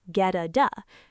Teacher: Notice the flap T linking get to at.